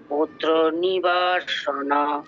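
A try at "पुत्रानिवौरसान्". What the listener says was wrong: নিবৌ, নিবৌ, নিবা নয়, ঔকার আছে, নিবৌ রসান, রসান, না বড় সানো নয়, নিবৌ রসান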